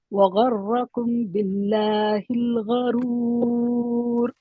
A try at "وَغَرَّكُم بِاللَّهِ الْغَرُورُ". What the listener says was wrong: आप इख्फा छोड़ दिया ना आखिरी का, गर्रकुम बिल्लाहिल। दो गलतियां हो गए आपके। मीम साकिन के बाद बा है।